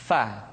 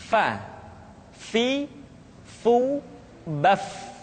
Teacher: Diucapkan dengan menyentuhkan ujung dua gigi seri kita bagian atas dengan bibir bawah bagian dalam. Fa. Seperti kita mengucapkan huruf F di dalam huruf Latin. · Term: huruf Fa